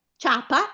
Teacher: C'è una vocale debole che è la i la vocale forte che è la a. Ciapa, le pronunciamo tutte e due insieme, nessun accento. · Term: ditongo